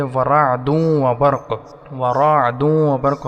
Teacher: वरादूं व बर्क़ रा को मोटा पढ़ेंगे, आइन से मिलाएंगे।